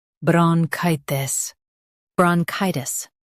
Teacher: bron chi tis bronchitis bron chi tis bronchitis Stress chi and keep tis soft.